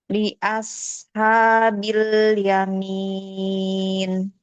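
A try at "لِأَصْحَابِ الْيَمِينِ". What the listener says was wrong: Bagus shotnya agak diangkat lagi.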